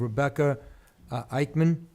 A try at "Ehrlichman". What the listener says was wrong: Ehrlichman. There's an R in there. I think it looks like Ehrlich. Ehrlichman.